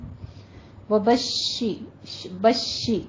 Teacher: ایسے تفشی کی آواز آئے گی شین میں اور اس کی آواز پھیل جائے گی. شین کے اوپر تشدید ہے, تشدید ادا کیجئے, تھوڑا سا رک کر سختی سے ادا کرنا ہے.